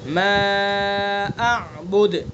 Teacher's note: हमज़ा को भी अदा किया जाए, आइन को भी अदा किया जाए